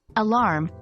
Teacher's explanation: the word alarm should be clear with emphasis on the second syllable